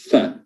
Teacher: perut bibir bertemu dengan ujung gigi seri atas fa, ya. Jadi ini gigi seri atas, sini ada ujungnya bagian bawah, itu ditempelkan di perut bibir bawah fa, ya. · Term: makhraj huruf fa